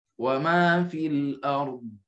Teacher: Sebab dhad ini bukan syiddah, bukan khalqalah. Baik, dia jahar rakhawa.